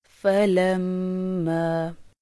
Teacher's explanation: میم شد کے غنہ میں ہونٹوں کو کچھ مضبوطی سے ملایا جاتا ہے